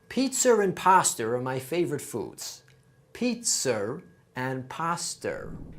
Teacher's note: So the Boston accent not only drops R sounds, it also adds them. If a word ends with a vowel and the following word begins with a vowel, we add an extra R sound in between those two. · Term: intrusive R